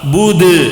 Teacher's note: اور یہاں پہ بدھ میں کھڑانے کی صورت میں دال میں خلخلہ ہوگا، بدھ، اس طرح خلخلہ کرنا ہے، سمجھ رہے؟